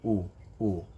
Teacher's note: notice when you pronounce u, you bring your lips together, u. So this is why they're called fatha, kasra, dhamma.